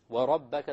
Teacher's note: the ra will be heavy because it has a fatha